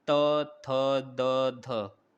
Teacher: जिसका उच्चारण ऊपर के दांतों पर जीभ लगाने से होता है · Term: दंत व्यंजन